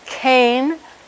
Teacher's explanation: a voiceless velar stop is what we think of as a K